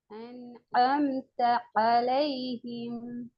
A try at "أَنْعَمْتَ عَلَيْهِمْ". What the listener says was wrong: சேர்த்து வரணும். குட். சேர்த்து வரணும். ஏட சவுண்ட் மாறணும். நீங்க சேர்த்தா தான் ஏட சவுண்ட் மாறும்.